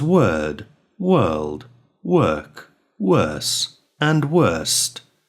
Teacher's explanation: although the words in which we find the sound normally have a vowel letter followed by the letter R, the R sound is not produced